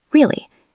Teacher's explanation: If you say really with a flat voice like really, you sound bored.